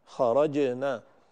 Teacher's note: ينبغي أن نعطي الجيم الشدة ونعطيها الجهر حتى تكون مقلقلة بشكل جيد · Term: قلقلة الجيم